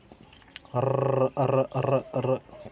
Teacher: जैसे जब तुम मुंह से बोलते हो ना र र र, तो तुम्हारी जीभ कंपन कर रही है, थरथर रही है जीभ तुम्हारी, र र र र, तो लुढ़क रही है ना जीभ ऐसे, तो इसे हम कहते हैं लुंठित या प्रकंपित।